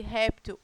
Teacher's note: a sílaba tônica sílaba mais forte é a penúltima sílaba da palavra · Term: paroxítona